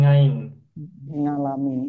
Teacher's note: orang-orang tua yang membaca Ain dengan nga